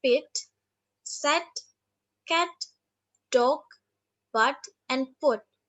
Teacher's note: no noticeable change in quality during the articulation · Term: short vowels